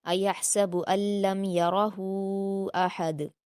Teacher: یرہ میں را کو پر پڑھیں گے اور ہا کو 4 حرکات کے برابر کھینچیں گے مد منفصل ہونے کی وجہ سے · مد منفصل ہونے کی وجہ سے، ایحسب ان لم یرہ احد، احد میں دال پر قلقلہ کریں گے